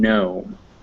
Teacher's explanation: g before an n or an m is never pronounced so if you ever see a g followed by an n or an m you don't pronounce it